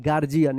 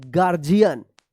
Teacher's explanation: यहाँ पे जो रहेगा गार्जियन, ठीक है ना, ये गार्जियन हम लिख दे रहे हैं, क्या है, ताकि आप इसको लिख करके याद कर लीजिएगा, गार्जियन, ठीक है ना। यहाँ पे डी का जो है ना ज उच्चारण हो रहा है